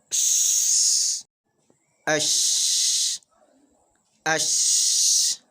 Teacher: Thus, the largest portion of the air should be released, even if something is to block it. Shin is produced from the middle of the tongue, and there is no vibration of the throat.